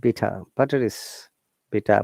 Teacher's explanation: british english is called non-rhotic we do not pronounce the r at all